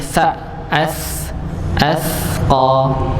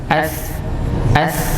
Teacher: Kalau sa itu bertemunya dengan ujung gigi seri atas.